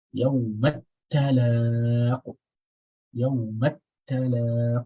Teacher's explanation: So you join the mim right away to the ta.